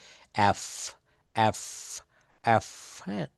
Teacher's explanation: দাঁতের উপরের দাঁতের অগ্রভাগ দিয়ে নিচের ঠোঁটের অগ্রভাগ স্পর্শ করার মাধ্যমে উচ্চারণ করতে হবে এফ এফ এফ উপরের দাঁতের অগ্রভাগ দিয়ে নিচের ঠোটের অগ্রভাগ মানে আগার দিকে স্পর্শ করতে হবে।